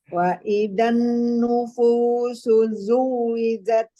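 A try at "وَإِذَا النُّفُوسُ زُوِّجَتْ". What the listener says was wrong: Afwan dok, di sini ada wawu kecil ya, jadi kayak matobi'i.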